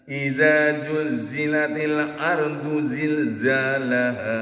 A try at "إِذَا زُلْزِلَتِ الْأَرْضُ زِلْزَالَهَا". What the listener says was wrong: bukan زل pakai زاي إذا زلزلت